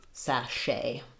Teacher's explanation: In sachet, my stress is on the shay syllable. The letter CH say the SH sound, and then the T is silent.